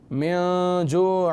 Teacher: أَطْعَمَهُمْ مِن جُوعٍ وَآمَنَهُمْ، من جوع وآمنهم، جوع، عین کے نیچے 2 زیر ہے اور آگے واو مشدد ہے۔ من جوع، من پر غنہ کرنے کی وجہ نون ساکن کے بعد حروف اخفا میں سے ہے، اخفا کا قاعدہ لگ رہا ہے لہٰذا غنہ ہوگا۔